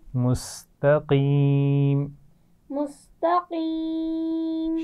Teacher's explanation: اس میں قاف کو موٹا پڑھنا ہے، تا باریک رہے گی، تا کو ہم موٹا نہیں پڑھیں گے